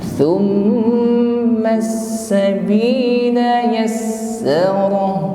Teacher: mim tasydid ditahan sampai berdengung